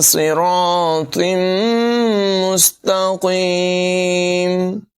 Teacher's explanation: صاد کی آواز بھی پر ہوگی، را کو بھی پر پڑھیں گے، طا کی آواز بھی پر ہوگی